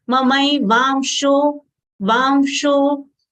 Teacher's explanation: therefore anuswar sound is half nasal ma